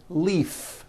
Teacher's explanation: leave this last word leave is very different from the word Leaf like from a tree which has an unvoiced F